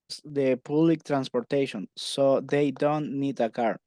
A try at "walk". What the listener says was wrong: Recordá que walk no lleva L. Oí como que le pusiste un poquito de L, como que dudaste, ¿vea? Walk, walk, walk, así va, sin L.